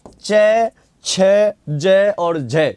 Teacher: स्पर्श संघर्षी व्यंजन वे होते हैं जिनमें उच्चारण का समय अपेक्षाकृत अधिक होता है और उच्चारण के बाद वाला भाग संघर्षी भी हो जाता है